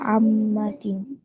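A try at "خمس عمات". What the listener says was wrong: টান আছে, আম্মা।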